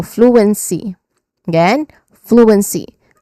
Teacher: the un sound, which is the middle sound, it is a short, relaxed sound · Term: schwa sound